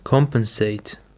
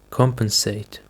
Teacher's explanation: The stress is on the first syllable, compensate.